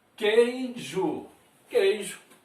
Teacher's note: K-E, esse I aqui é semivogal, porque temos um, né, nesse caso aqui um ditongo, temos um dígrafo aqui, Q-U, e depois um ditongo. O I está funcionando como semivogal